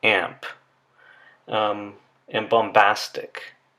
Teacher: the nasal sound is agreeing in place of articulation with the following stop · The nasal sound n does not agree in the place of articulation with the stop p or b. The sound that agrees in the place of articulation with the p or b stop would be a m.